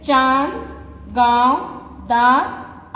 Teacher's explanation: अनुनासिक का उच्चारण नाक और मुंह की सहायता से किया जाता है